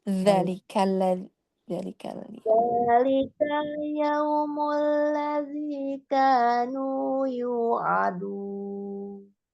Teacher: dzanya jadi memang benar-benar keluar, terjulur lidahnya ya